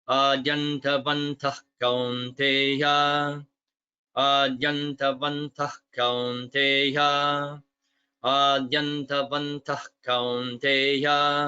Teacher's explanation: Just notice that visarga at the end of adyantavantaha becomes guttural, so it's pronounced in the throat before ka